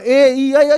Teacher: अब मैं मध्य स्वर की कोई बात करेगा, बेटा अग्र स्वर क्यों है? जो स्वर जीभ के अगले हिस्से से बोले जाएं, क्योंकि हम जीभ के हिस्से पे बांट रहे हैं, जीभ के अगले हिस्से से बोले जाने वाले स्वर।